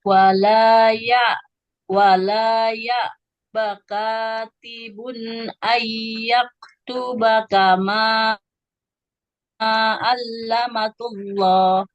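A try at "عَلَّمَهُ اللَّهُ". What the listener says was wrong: Nggak ada titiknya, Ibu. Allamahullah, bukan allamatullah ya. Karena tidak punya titik.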